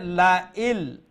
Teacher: এই নুন সাউন্ডটা লামের মধ্যে ঢুকে গেছে, তো নুন সাউন্ড আমরা শুনতে পাবো না